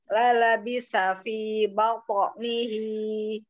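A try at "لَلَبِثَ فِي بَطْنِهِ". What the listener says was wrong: Masih kayak arah ke kol-kolah kubro. Dia lembut. Pantulannya lembut. Tipis pantulannya, tapi dia termasuk huruf tebal kan? Apo nihi, karena dia kol-kolah.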